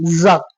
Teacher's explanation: ஜா சொல்லும் பொழுது நல்லா இசட் சொல்ற மாதிரி 2 பல்லையும் மேல் பல்லையும் கீழ் பல்லையும் அழுத்தி சொல்லணும்